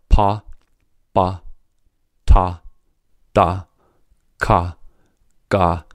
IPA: p, b, t, d, k, g